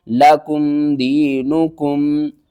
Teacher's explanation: نون پیش نو، دینو، کاف میم پیش کم، دینکم، لکم دینکم، یا ساکن سے پہلے زیر ہے، حروف مدہ ہے، ایک الف کے برابر آپ نے کھینچ کر پڑھنا ہے